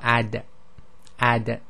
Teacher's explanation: this is not um aspirated so you don't let air out